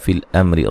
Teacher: را کو باریک پڑھا جائے گا